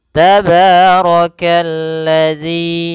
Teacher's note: rnya dibaca tebal karena dia Ro berharakat fathah · Alif dan lam yang dia ditulis tapi tidak dibaca sehingga langsung dihurufkan ke huruf lam yang berharakat tasydid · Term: alif lam syamsiah